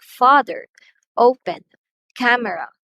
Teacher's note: words like father, open, camera have first syllables as stressed.